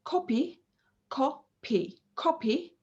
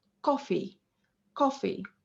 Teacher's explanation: a comparison between the pa in copy and the fricative in coffee